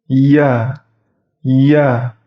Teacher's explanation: Huruf Ya itu tengah lidahnya itu diangkat mendekati langit-langit. Jadi tidak menyentuh langit-langit, itu mendekati langit-langit.